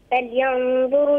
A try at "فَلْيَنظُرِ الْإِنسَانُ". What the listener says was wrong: فلينظري، الراء مكسورة،